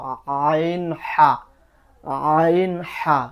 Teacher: 2 নম্বর মাখরাজ হলকের মধ্যখান, হলকের মধ্যখান হইতে আইন হা, এটা নিচে যাচ্ছে না, এই কম্পনটা নিচে যাচ্ছে না, কিন্তু আইন হা, আইন হা 2 নম্বর মাখরাজ, আইন হা।